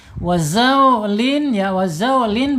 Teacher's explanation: Sofir itu apa? Sofir itu ada suara desisan seperti suara burung dan angsa ya, karena tekanan lidah yang kuat. Jadi aliran udaranya terhimpit.